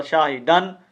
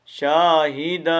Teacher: اس دو زبر کی تنوین کو الف مدہ سے بدلتے ہیں